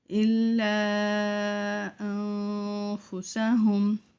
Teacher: الا کو کھینچیں گے، 5 الف کی مقدار، اس کے اوپر مد ہے۔ انفسہم، نون ساکن ہے، اس کے بعد حروف اخفا میں سے فا ہے، یہاں پہ ہم اخفا کریں گے۔